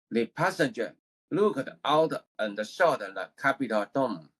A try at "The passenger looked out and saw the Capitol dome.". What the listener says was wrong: It was the pronunciation of the words were correct, but after the word ends, see, I hear some other sound. Like, how do I explain this? When I hear you say it, I hear you pronounce a particular word, but the word has some other sound after the word ends. I don't want to hear anything else.